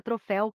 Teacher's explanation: a sílaba mais forte da palavra é a última sendo assim uma palavra oxítona e aí você acertou tudo você